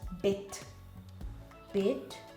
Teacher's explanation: Remember, our D sounds a little bit different. There's a hint of a T in our D.